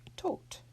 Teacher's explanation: with a final D that will actually be pronounced as a T